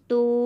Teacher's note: زیادہ نہیں کھینچتے، ایک الف کے برابر۔ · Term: واو مدہ